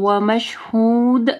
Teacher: وشاہد، یہاں پہ دیکھیے تنوین ہے، اس کے بعد واو آ رہی ہے، ٹھیک ہے، ادغام آ رہا ہے غنہ کے ساتھ، ٹھیک ہے۔ ومشہود، دال کے اوپر جو ہے کلکلا کرنا ہے